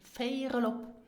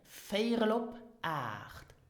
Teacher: these two words, feirel op, are pronounced in spoken Luxembourgish as if it was only one word. So you will not hear feirel op, but feirel op.